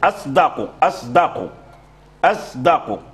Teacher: والدال مجهور فيميل اللسان الى الزاي فيقول اص اصدق اصدق اصدق فيشم الصاد زاين كما في قراءه حمزه والكسائي · الدال الصاد مهموس والدال مجهور اذا اللسان اللسان يميل الى ماذا يميل الى ان يجعل الصاد زاين لماذا لان الزاي مجهور والدال مجهور